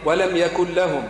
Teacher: أظهر الميم عند الشين حكمها الإظهار